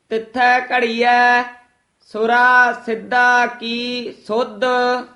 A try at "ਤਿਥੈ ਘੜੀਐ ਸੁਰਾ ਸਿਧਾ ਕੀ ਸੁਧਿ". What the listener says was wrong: ਸੁਰਾ ਸਿੱਧਾ ਕੀ ਇਥੇ ਠਮਕ ਲਾ ਦੇਣੀ ਹੈ, ਕੀ ਸੁਧ ਨਹੀਂ ਕਹਿਣਾ ਹੈ।